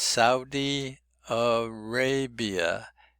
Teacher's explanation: In this case, the ray is stressed.